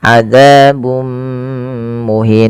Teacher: Yang ini kita namakan dengan bacaan idgham bi gunnah. Yaitu cara membacanya memasukkan tanwinnya kepada mim dan ditahan. Adzabun muhin, tidak dibaca adzabun muhin.